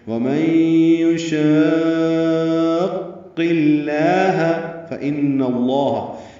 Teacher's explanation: ان میں نون مشدد پہ غنہ ہے، اس کی زبر کی وجہ سے لام اسم جلالہ پر پڑھیں گے۔